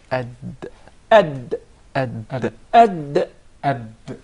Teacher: The Dal is pronounced from the top side of the tip of the tongue and the gum line of the two front upper incisors.